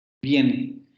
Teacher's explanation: Aquí nosotros vemos cómo en viene la I aparece en un diptongo. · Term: semiconsonante